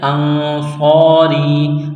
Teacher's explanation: یہاں نون ساکن کے بعد صاد ہے، حروف اخفا ہے، آواز ناک میں چھپائیں گے، غنہ کریں گے، صاد میں سیٹی کی آواز پیدا کریں گے، صاد کو موٹا کرنا ہے، ایک الف کے برابر اس کو کھینچنا ہے۔